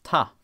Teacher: avoiding a final consonant by deleting it, and switching out a labial sound for the preferred coronal sound